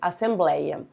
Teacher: Os ditongos abertos ei e oi deixaram de ser acentuados em palavras paroxítonas. As palavras assembleia e ideia são paroxítonas, ou seja, tem a penúltima sílaba mais forte. Por isso que esse ei perdeu o acento apenas nas palavras paroxítonas.